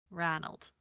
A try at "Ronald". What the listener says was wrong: Not Ronald, but just Ronald without the D.